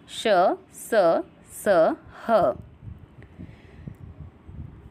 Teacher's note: इन व्यंजनों के उच्चारण में हवा मुंह के किसी स्थान से रगड़ खाकर बाहर निकलती है। इनके उच्चारण में ऊष्मासी उत्पन्न होती है। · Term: ऊष्म व्यंजन